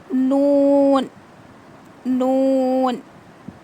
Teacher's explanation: ज़ुबान के किनारे को सामने के 4 दांत के मसूड़ों में लगाने से नून अदा होगा।